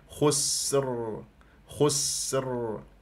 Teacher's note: لازم تبين السين صفير وجريان للصوت جريان للنفس